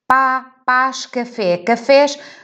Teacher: Enquanto que em pá e café, claramente conseguimos perceber que se trata de uma vogal aberta